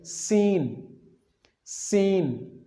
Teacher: سین یعنی آپ سامنے والے اوپر اور نیچے کے دانتوں کو آپس میں ملا کے پڑھیں گے اور سیٹی کی آواز آئے گی